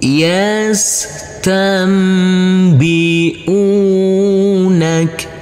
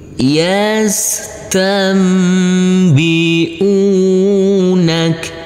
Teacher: huruf nun yang bertemu dengan huruf ba karena ini adalah bacaan iqlab maka huruf nunnya berubah menjadi huruf mim sukun